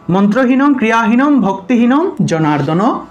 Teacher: শুধুমাত্র অনুস্বারের পরিবর্তে ম উচ্চারণ করবেন